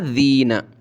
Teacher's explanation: ذال پر بھی زبان نکالی جاتی ہے، ذال یا زیر ذی، نون زبر نہ، ذین۔